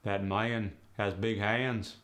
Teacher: The A now becomes an aya in words like man's hands.